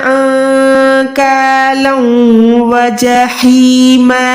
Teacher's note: नून साकिन के बाद काफ है, नून साकिन को छुपा के अदा करना होता है